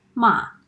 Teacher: The fourth tone is a dropping tone. The pitch of your voice goes low fast, a little bit like when you're annoyed or angry and say no.